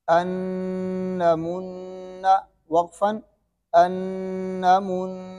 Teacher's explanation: یہ نون مشدد میم مشدد پر وقف کریں یا ملا کر پڑھیں، اس پر ہمیشہ کیا ہوگا؟ غنہ ہوگا